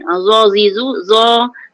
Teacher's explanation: kena keluar lidah sedikit. Kemudian keluar lidah, tekan gigi atas itu ke lidah tadi.